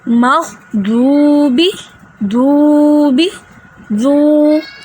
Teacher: غین جو ہے یہ بھی حروف مستعلیہ میں سے ایک ہے، اس لیے ہم اس کو موٹا پڑھیں گے